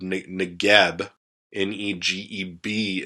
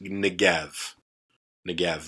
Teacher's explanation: So the bet, when it takes the dot, it has the B sound. When it's hollow, or when it doesn't have the dot in it, it actually has more of a V sound to it.